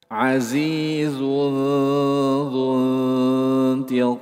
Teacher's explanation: Bertemu dengan huruf dzal. Dzal huruf tipis. Berarti ikhfanya ikhfa tipis.